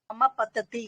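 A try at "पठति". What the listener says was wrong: ఉమా పతతి, పఠతి, మహాప్రాణం ఠా.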